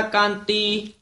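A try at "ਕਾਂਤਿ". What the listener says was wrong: कांति कांति नहीं, ईड़ी देसियारी भी नाल लगी हुई है।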